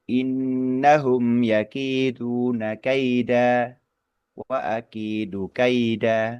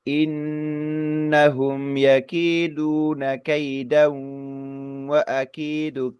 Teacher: ketika wakaf itu fathah tanwinnya berganti menjadi bunyi panjang bunyi panjang pengganti atau mad iwad dari fathah tanwin ini